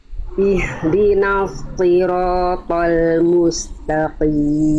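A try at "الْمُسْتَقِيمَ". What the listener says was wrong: Nah, tinggal jangan toqim. Tapi huruf tipis huruf tebal, Bun. Ya, tadi Bunda to, jangan to, tapi ta.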